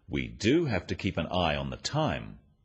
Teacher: the emphasis on the word do and practice after me we do have to keep an eye · Notice the emphasis on the word do